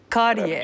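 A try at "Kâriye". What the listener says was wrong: Kariye efendim. Ah, uzatacaksınız. Kariye. Kariye olmadı.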